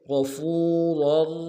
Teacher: دونوں را کو موٹا ادا کریں گے